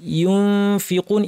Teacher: ইউনফিকুন ইখফা, অর্থাৎ ফা বলার প্রস্তুতি নিয়ে নাক থেকে গুণনা করা। ফা বলার প্রস্তুতি অর্থ কি, দাঁতকে ঠোঁটের উপর এনে নাক থেকে গুণনা করে বলতে হবে ইউনফি।